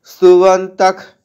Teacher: বিসর্গটা খ, অর্ধেক খ এর মতো শোনাচ্ছে, কারণ পরবর্তীতে ক বর্গের ক আছে